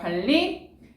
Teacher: 유음이 아닌 니은이 유음과 만나서 관리, 유음으로 바뀌고 있습니다. 유음화 일어났네요.